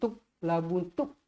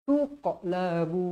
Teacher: Kat situ dekat tengah-tengah ayat ada huruf qalqalah. Kita baca dengan melantun.